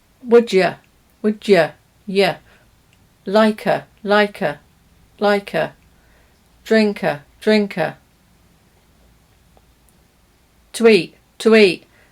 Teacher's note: we change the vowel in the weak forms to the schwa sound